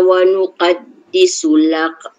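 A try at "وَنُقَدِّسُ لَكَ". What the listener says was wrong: Kap tu nipis. Lak.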